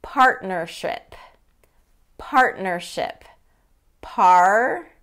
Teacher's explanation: So instead of partnership, partnership, that T gets dropped.